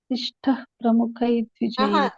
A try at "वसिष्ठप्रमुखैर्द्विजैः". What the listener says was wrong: You are saying a visargaha there. You should say ip there. Vashishtap.